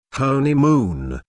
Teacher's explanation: Listen to the stress on honeymoon. There are three syllables in honeymoon, with the stress on the first syllable, honeymoon. This content word is culturally important, so it's emphasized.